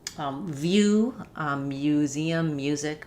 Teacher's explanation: we do keep the y after certain consonant sounds